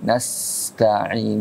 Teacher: Tanbih juga sa itu harus agak lama kan. Nas jangan cepat ya. Nas tahan dikit.